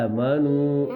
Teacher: اور اے کی آواز باریک ہوگی نہ کہ موٹی